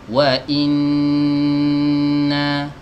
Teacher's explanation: huruf nun nya dalam kondisi bertasydid ya artinya dia dibaca dengan ditahan terlebih dahulu sebelum berpindah ke harokat fathah yang ada di atasnya ya jadi langsung Jangan buru-buru ke Fatah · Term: nun tasydid